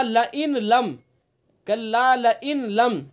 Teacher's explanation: نون کا لام میں ادغام کیا گیا اور ادغام تام کیا گیا. ادغام تام جس میں پہلے حرف کی صفت باقی نہ رہے.